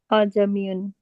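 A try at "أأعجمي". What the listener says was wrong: ہاں اعجمیون، اعجمیون دو حمزے پڑھیں. تسہیل وجوبی کا.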